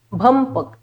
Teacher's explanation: इथे भ च्या पुढे प आलाय म्हणून माझा उच्चार म झाला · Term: अनुस्वाराचा उच्चार